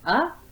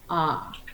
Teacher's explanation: again this is called the nair nilay for the mouth so short open is uh and then the tongue stays the same the air comes out and you extend your mouth wider to say ah